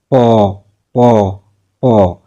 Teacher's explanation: এই প কিন্তু দুই ঠোঁটের উচ্চারণ মানে স্পর্শের কারণেই উচ্চারিত হচ্ছে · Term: ওষ্ঠধ্বনি